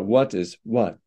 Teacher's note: words that end in t are hard consonants tend to have a little bit of an uh at the end a little puff